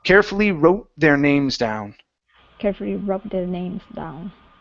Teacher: I'm almost pausing just a touch right before I get to the TH.